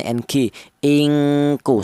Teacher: dengung yang lebih dominan daripada samarnya. Jadi dibacanya itu yang kuat dengungnya bunyi vokalnya ng ingku seperti itu. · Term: ifa adna